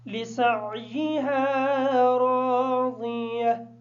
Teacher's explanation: را کو الف مدہ کی وجہ سے تھوڑا سا لمبا کر کے پڑھیں گے.